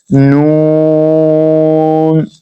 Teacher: जबान का किनारा और इनियाब से सनाया तक के दांतों की जड़ों से अदा होता है।